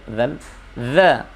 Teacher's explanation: kalau dha ujung lidah nempel pada ujung gigi seri atas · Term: huruf dha